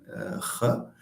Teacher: Okay, it's a voiceless uvular